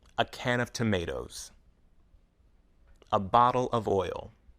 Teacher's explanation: unstressed words like uh and of sound fast weak and not very clear